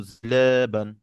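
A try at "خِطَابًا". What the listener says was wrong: না না না, দেখ এটা হচ্ছে জিম যদি হইতো। খ, খ, খ।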